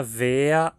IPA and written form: veːɐ (wäär)